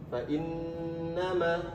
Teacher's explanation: Karena nun dan mim yang bertasydid hukumnya gunnah, maka harus tahan juga.